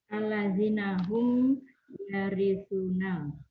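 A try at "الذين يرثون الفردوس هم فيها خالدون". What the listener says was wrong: Alladzina hum yarisuna. Ulaikumul bukan alladzina hum, enggak ada humnya, Bu. Alladzina yarisunal firdausahum fiha khalidun. Enggak ada humnya, Bu. Alladzina yarisun.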